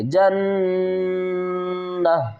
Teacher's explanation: جیم کو جب ہم نون کے ساتھ ملائیں گے تو یہاں پر غنہ بھی کریں گے